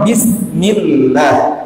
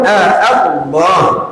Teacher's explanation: Kalau yang mendahului lafzul jalalah, ya, lafzul jalalah itu adalah harakat kasrah, maka lamnya tidak tebal.